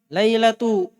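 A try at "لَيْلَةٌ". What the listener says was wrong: Laila tanwin.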